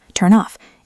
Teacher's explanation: The N in turn links to the O in off, turn off. It sounds like one word.